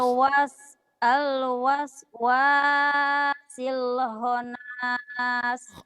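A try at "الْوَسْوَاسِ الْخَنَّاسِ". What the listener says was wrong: Ada tasdid deh. Honnas, Honnas. Ada tasdid deh. Al-waswasil khannas.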